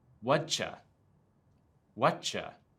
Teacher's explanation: Words ending with t and starting with y often get combined. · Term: Changed sounds